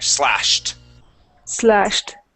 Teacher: with that uh ed, we need to add a t there